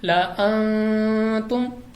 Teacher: ہم نے پڑھ رکھا ہے کہ نون ساکن یا تنوین کے بعد اگر حروف اخفا میں اس کو حرف آ جائے تو ہم نے غنہ کر کے پڑھنا ہے. تو تا حروف اخفا میں سے ہے ہم یہاں پہ غنہ کر کے پڑھیں گے